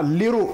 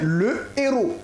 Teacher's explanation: le H aspiré nous évite bien entendu l'élision et la liaison